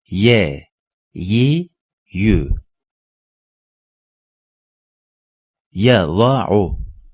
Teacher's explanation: dilin ortasıyla üst damağın ortasından çıkar